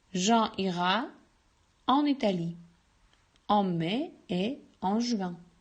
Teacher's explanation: la conjonction de coordination et reste toujours muet